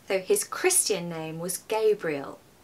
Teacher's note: I'm also stressing Gabriel because it's the name.